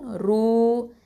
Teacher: இது வந்து தஃப்ஹீமான ரா, ஹெவியாக தான் உச்சரிக்கணும்